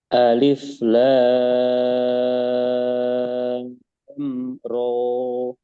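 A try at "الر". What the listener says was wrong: Nah, ro-nya berapa harokat? Dua. Nah, karena dua jadi jangan terlalu panjang. Ro, ro, nah segitu. Alif Lam Ro.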